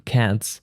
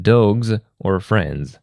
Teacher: At the end of a word, S can sound like S unvoiced like in cats and Z voiced like in dogs or friends